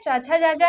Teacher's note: चाचा जाजा यहाँ हम तालु से बोलते हैं